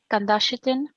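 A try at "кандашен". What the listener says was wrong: Kardashian, just no. You don't have the T.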